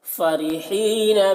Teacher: فرحین را کو باریک پڑھیں گے، یہاں پر یا مدہ ہے، اسے ایک الف کے برابر کھینچ کر پڑھیں گے